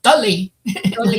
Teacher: the emphasis would be on the first syllable